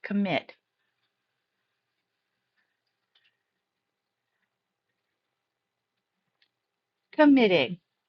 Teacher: Committing. Second syllable is stressed. Double the t add ing.